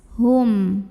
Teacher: Maka cara membacakannya adalah mim sukunnya ini dibunyikan dengan jelas. Hum dan jangan ditahan. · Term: idhar syafawi